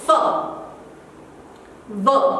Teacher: Again, if you think labiodental, it's your lips and your teeth, somewhere they are used. So it is articulated by using both the lips and upper front teeth. Okay, for example, f, v, your lower lip and front teeth.